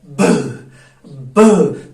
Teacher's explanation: जब मैं कहूंगा जरा ब के निकाल के देखो, जरा ब निकालो, आप बोलोगे ब, तो आप क्या करते हो, लिप्स को ऐसे ले आते हो, जिसको हम बोलते हैं बाइलेबियल साउंड, तो फिर ब प्लोजन होता है, इसलिए हम बोलते हैं इसको प्लोसिव साउंड